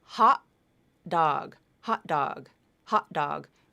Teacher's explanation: that final T is typically pronounced as a glottal stop T, just vocal cords. You're linking a final T to a D. · I typically pronounce that final T as a glottal stop.